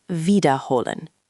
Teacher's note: make sure the W in wiederholen sounds like a V in English, not like a W